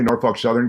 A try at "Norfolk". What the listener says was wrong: don't pronounce the L though. I just say Norfolk Southern. Norfolk.